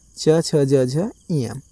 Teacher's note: इन सभी वर्णों का उच्चारण स्थान क्या है? तालु है। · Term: तालव्य